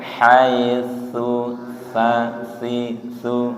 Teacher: Kalau yang haitsu itu ujung lidah menyentuh ujung gigi. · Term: tsa